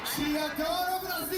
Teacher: essa ideia do O no final com alçamento, ou seja, essa transformação do O em U.